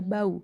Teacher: a u pada kata kerbau Ai pada kata santai sementara itu gabungan vokal au pada bau bukan diftong karena menghasilkan dua bunyi